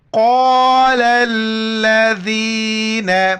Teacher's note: ذال کے وقت زبان باہر نکالنا ہے اور یا کے ساتھ ملانا ہے